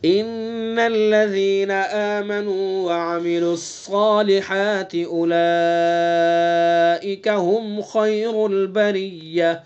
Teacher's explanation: اولئک مد متصل ہوگا، یعنی کم سے کم 2 الف کھینچیں گے اور زیادہ سے زیادہ 4 الف کھینچیں گے اس کو